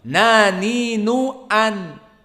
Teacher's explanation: An. Maka nun di sini dinamakan sifatul jahar, tidak ada udara yang keluar.